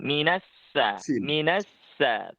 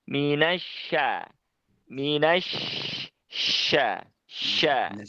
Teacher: Cuma kurangnya mungkin di syaitoni, minasya, shinnya itu mungkin agak sedikit ke dalam ya lidahnya. Jadi yang dipakai lidah bagian tengahnya, bukan yang depan. Kalau depan nanti keluarnya pasti huruf sin, minasa, minasa.